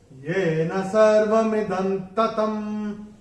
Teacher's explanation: अनुस्वार के बाद जब त आएगा तो अनुस्वार का उच्चारण होगा न